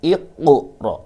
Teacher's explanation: harus dipantulkan huruf qa-nya atau huruf qalqalahnya dengan cara baca iqra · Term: qalqalah sughra